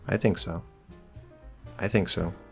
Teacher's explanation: think is still stressed and so it can be kind of hard to hear but the focus is actually on i